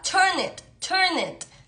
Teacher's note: el it se pega a la última consonante del verbo y así suena como más rápido · le pegas esa n al it no es como que dejas un espacio